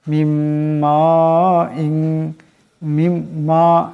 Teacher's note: এখানে মিমের উপর মদ আছে, এটাকে লম্বা করিয়া পড়তে হবে।